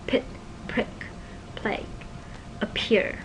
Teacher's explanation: the stop sounds become extra aspirated in the beginning of a syllable, like pit. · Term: extra aspiration